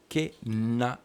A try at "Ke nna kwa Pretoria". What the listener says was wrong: Nna. Nna. Emphasis.